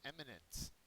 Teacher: eminent is an adjective first syllable is accented